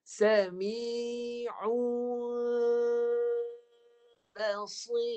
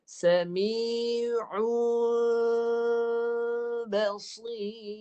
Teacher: Kita tak nak jelaskan mim. Bibir kalau rapat jadi mim jelas. Kita tak nak mim yang jelas. Mim yang samar-samar. Bibir jangan rapat.